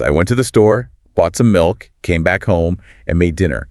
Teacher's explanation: The rising intonation on store and milk acts like an acoustic comma. It tells the listener, wait, there's more coming. · The final fall on home or dinner signals the completion of the entire narrative unit. If the speaker used a falling intonation on store, the listener would assume the story was over at that point and might even interrupt.